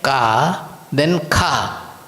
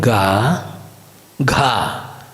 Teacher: ka becomes kha with that h part added to it, and ga becomes gha with the h part added to it.